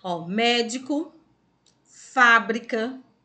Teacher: falamos que ela é proparoxítona ao médico fábrica tá vendo ó fábrica também é a sílaba mais forte é a sílaba antepenúltima